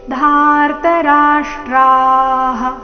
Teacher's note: ವಿಸರ್ಗದ ಉಚ್ಚಾರಣೆ ಹ ಎಂದು